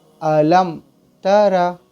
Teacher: میم ساکن کے بعد با اور میم کے علاوہ کوئی حرف آئے تو میم ساکن کو ظاہر کر کے بغیر گنہ کے جلدی پڑھیں گے۔ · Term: اظہار شفوی